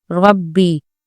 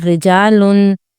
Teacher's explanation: رو اگر متحرک ہو یعنی رو کے اوپر کوئی بھی حرکت ہو تو اس رو کو موٹا پڑھا جاتا ہے، اور اگر رو کے نیچے کوئی حرکت ہو تو وہ رو باریک پڑھی جاتی ہے. جیسے ربی میں رو کو پر پڑھیں گے رو پر زبر کی وجہ سے، اور رجالن میں رو کو باریک پڑھیں گے رو کے نیچے زیر کی وجہ سے.